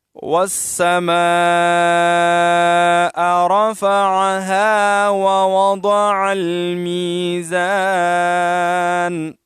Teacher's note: والسماء میں بڑی مد ہے، 4 الف کی مقدار، اس کو ہم کھینچیں گے اور واو کو سین کے ساتھ ملائیں گے، اور آخر میں حمزہ ہے، یہ بھی ٹھیک طریقے سے ادا کریں گے.